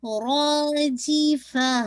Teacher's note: را ایک تو یہ آپ نے ہیوی بھی پڑھنا ہے اور 2 کاؤنٹ پڑھنا ہے